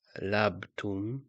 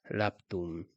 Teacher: voicing is lost before voiceless sounds, so it's not labtun, but it's laptun.